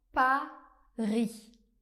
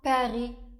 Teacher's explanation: Pour prononcer le son /a/ on va prononcer un /a/ bien ouvert, comme dans Paris.